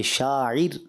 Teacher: لفظ شاعر یہاں را کو باریک پڑھیں گے